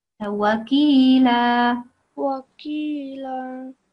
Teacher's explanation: this is not a thick letter. This is not like qaf. This is ka. So it's a thin letter.